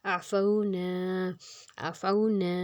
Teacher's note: نا کو ہم 2 حرکت زیادہ کھینچیں گے · فاؤ کو ہم نرمی سے پڑھیں گے اور لمبا کیے بغیر پڑھیں گے، واو لین ہے اس پر ، واو پہ جزم اور اس کے پیچھے زبر، تو وہ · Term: الف مدہ